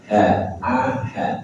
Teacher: Kemudian ada ha pangkal tenggorokan sama dengan hamzah. Ha a ha sama.